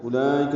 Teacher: لام پر کھڑا زبر اور اس کے بعد حمزہ آنے کی وجہ سے مد متصل بنی ہے ، اس سے پہلے واو نہیں پڑھیں گے، حمزہ اور کاف